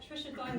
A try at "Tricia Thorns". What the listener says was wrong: Thorns, Tricia Thorns. I'm plural.